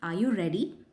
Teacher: Rising intonation this is when your voice goes up at the end of a sentence often used for yes or no questions for example are you ready notice how the tone Rises at · used for yes or no questions for example are you ready notice how the tone Rises at the end